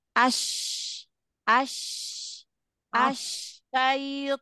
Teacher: jadi jangan jangan lagi ke depan ke tengah Oh ke tengah tengah lidah ketemu dengan langit-langit tengah itu makhraj huruf syin